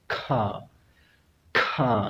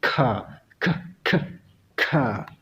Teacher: Ya, itu yang dinamakan plosive, ledakan. Ya, kalau di dalam bahasa Inggris istilahnya adalah voiceless velar plosive, yaitu ledakan atau letupan. Jadi orang sana itu tidak mengatakan K biasa seperti kita, tapi dia berkata K.